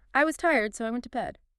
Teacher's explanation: So >> So and notice the pitch as well. It usually falls just a little bit at the end.